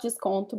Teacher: Desconto, it's not desconto because the first O, is nasal, and the last one is actually pronounced like U.